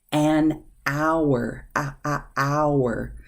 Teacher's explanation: The H is silent. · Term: silent H